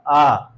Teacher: जब वायु निकल रही है वो जिह्वा के मध्य भाग को स्पर्श करते हुए निकल रही है